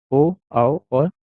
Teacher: ओष्ठ plus कंठ से आपकी ओ, औ और औ मिलता है।